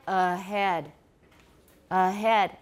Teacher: can continue as you move from one vowel through to another the articulatory movement is continuous and the ha is signaled by a weakening of the voicing which may not even result in result in a completely voiceless